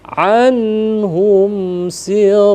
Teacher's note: Kalau hum si izhar juga, tapi izhar syafawi, syafatun, kedua bibir nih tertutup, dibaca jelasnya ya.